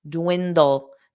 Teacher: you need that dark L at the end